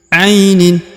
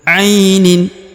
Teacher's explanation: Huruf a, perhatikan di sini diayun sekali dengan lembut ya. Karena di depannya terdapat ya sukun ya.